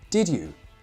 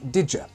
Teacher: When a D is followed by a Y, it doesn't sound like ch, it sounds like j. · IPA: /dʒ/